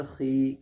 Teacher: या मद्दा को एक अलिफ के बराबर खींच करके पढ़ेंगे